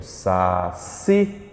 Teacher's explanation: Quando eu digo, por exemplo, saci, embora não tenha acento, o si é a mais forte. Dou a ela o nome de oxítona.